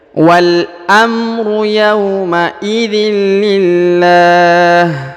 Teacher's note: Huruf lamnya dipanjangkan 2 harokat atau bisa 2, bisa 4, bisa 6 ya, karena ini berada di ujung ayat